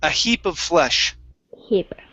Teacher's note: long E sound instead of hip, it's heap